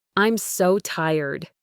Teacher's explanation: convey exhaustion with a noticeable falling intonation.